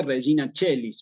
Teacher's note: la c se une al diptongo ae y me queda la c con la e la c con la e me queda como Che · hay que pronunciarla a la a con la e en latín como si fuera una e